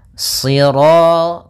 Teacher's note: Sirata, si, sambil pangkal lidah kita karena shad itu pangkal lidah kita terangkat dan melekat karena dia huruf idbaq.